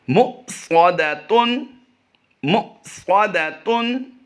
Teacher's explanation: اگلا لفظ ہے مُؤْصَدَةٌ، واو، حمزہ اور جزم یہ ایک ہی کلر میں ہیں، تو یہاں پر واو کو ہم سکپ کر دیں گے اور حمزہ ساکنہ کی وجہ سے اسے، یعنی حمزہ پر جزم آ گئی تو اس کو ہم جھٹکا دے کر پڑھیں گے